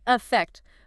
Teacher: Especially in American English, we get very, very lazy with our vowels. We mash everything into what linguists call a schwa, that neutral sound.